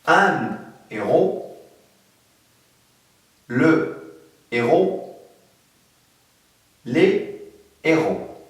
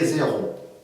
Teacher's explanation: Le H aspiré, bien sûr, il interdit la liaison et aussi les lésions.